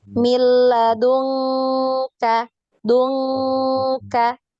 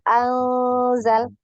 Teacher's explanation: yang lain itu dia samar ya samar tidak terlalu n ng bunyinya tidak ng tapi di pertengahan antara n dengan ng ya ada di pertengahan ee jadi dia samar ya itu ada